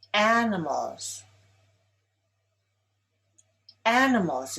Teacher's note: Animals is stressed on the first syllable.